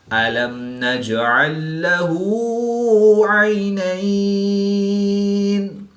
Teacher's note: جیم ساکن ہے تو یہاں پر قلقلہ صغریٰ کر کے پڑھیں گے۔ یا ساکن سے پہلے زبر ہے تو یالین ہوگا، اس کو لمبا نہیں کریں گے۔